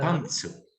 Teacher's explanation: high pitch accent on pan